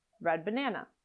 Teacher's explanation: you might drop the D completely